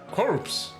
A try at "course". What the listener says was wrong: No, course. without the P. I know, but it's pronounced without the R. Course. No, it's pronounced without the R. Oh, sorry, without the P, yes.